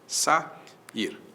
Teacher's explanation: O A para um lado, o I para o outro, duas vogais que vêm em sequência, isso é hiato.